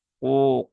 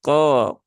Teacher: Selanjutnya di lafaz yang kedua di ayat yang ketiga ada huruf qaf tadi sudah ya. Dia diucapkan dengan menaikkan pangkal lidah, bukan dengan menggelembungkan pipi atau dengan memajukan bibir yang menjadi ko ya.